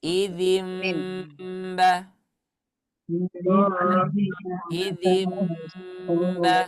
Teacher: Ketika kita seharusnya membaca idzinba, tetapi kita ubah menjadi idzimba. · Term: iqlab